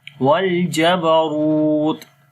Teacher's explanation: Wal jabarut, ra we read in heavy sound and then we long also due to waw madda, and in the ta we make hams quality